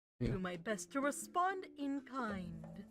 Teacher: I heard a slight nasal sound to his speech